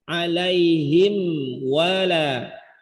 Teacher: Izhar syafawi, lebih ditekankan pada wawu karena mim dan wawu ini makhrajnya sama-sama dari dua bibir. Jadi jelaskan bunyi m-nya dulu, sempurnakan.